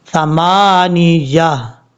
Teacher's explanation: جب یہاں پہ وقف کریں گے تو تا کو ہا سے بدل دیں گے، ثمانیہ، لاسٹ میں ہا کا ساؤنڈ آئے گا، ثمانیہ یومئذ تعرضون، یہ ہے اس کا پڑھنے کا طریقہ وقف میں۔ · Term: گول تا